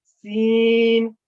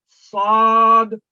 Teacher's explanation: اور سین میں سیٹی کی آواز ہے، سین، اور اس میں بھی سیٹی کی آواز ہے، لیکن یہ سین ہلکی آواز میں ہے، یہ صاد اسی کے مقابلے میں بھاری آواز میں ہے، سین صاد۔ لیکن صاد جب آئے یہاں پہ بالکل سیٹی کی آواز نہیں آنی چاہیے، یہ بالکل نرمی کے ساتھ دا ہوتا ہے۔